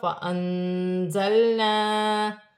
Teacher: نون ساکن میں اخفا ہوگا۔ زا چیٹی والا حرف ہے، جماؤں کے ساتھ ادا کیا جائے گا۔